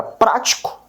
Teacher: Percebe que prático, o pra, ele é pronunciado com mais força. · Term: antepenúltima